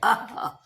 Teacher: अ को विसर्ग भी कहा जाता है। उच्चारण अ का उच्चारण करते समय हल्की हवा गले से निकलती है।